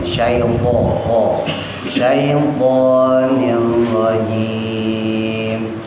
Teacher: Syaiton shinnya tebel, poknya monyongin